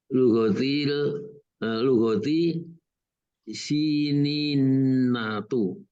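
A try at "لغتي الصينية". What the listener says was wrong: Asnya dibunyiin tuh. Asiniyatu.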